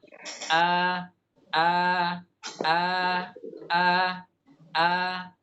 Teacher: misalnya ee kata beliau di sini Alif itu keluarnya dari mana Alif itu keluarnya dengan cara ee pita suara bergetar kata beliau pita suara bergetar kemudian ee mulut dalam kondisi terbuka sedang